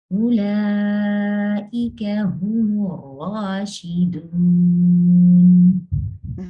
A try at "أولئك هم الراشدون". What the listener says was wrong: Your mud, when you say the mud wow can be lighter. So instead of saying ar-rashidun, the sound seems to be staying very much at the back. Doon. To make the mud wow lighter, remember, because we say that the mud letters are produced from the jawf, right?